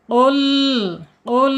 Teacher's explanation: Alisannya di mana? Alisannya ujung tepi lidahnya menyentuh langit-langit yang depan ya. Sejajar dengan gigi seri atas. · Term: Lam